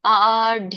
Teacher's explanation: ಆಢ್ಯೋ ಆ ಇದೆ, 2 ಕಾಲಗಳಿಗೆ ಹೇಳ್ಬೇಕು ನೀವು ಅದನ್ನ ಎಳಿಬೇಕು. ಆಢ್ಯೋ ಎಳಿಬೇಕು ಅಂದಾಗ ತುಂಬಾನು ಇಲ್ಲ ಕಡಿಮೆನೂ ಇಲ್ಲ, ಆ ಅನ್ನೋದು 2 ಗಳಿಗೆ ಎಳಿಬೇಕು.